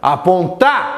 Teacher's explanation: Você achou qual é a sílaba tônica? É a última. Nesse caso, então, é uma oxítona.